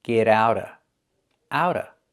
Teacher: the T in out changes to a fast D because it's between vowels